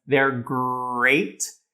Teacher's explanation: holds on to that er leading into the rest of the syllable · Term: vocalic er